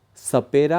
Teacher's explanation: और जो सपेरा का स है उस स में जिह्वा दांत और मसूड़े के बीच के भाग की तरफ आगे बढ़ती है। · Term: दंत्य